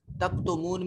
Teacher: تکتمون میں واو ساکن ما قبل مضموم تو واو مدہ ہے، اس کو لمبا کر کے پڑھیں گے